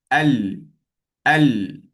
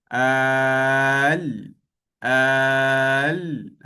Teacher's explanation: Dia menggunakan sisi hujung lidah kita. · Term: huruf lam